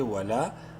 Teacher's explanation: لام الف زبر لا الف مدہ ہے، لام کو ایک برابر لمبا کریں گے